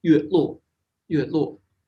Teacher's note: these first two characters are actually both rusheng, so they're very short. Yue luo. And so moonlight, light is a short English vowel because of the T sound, it shortens it.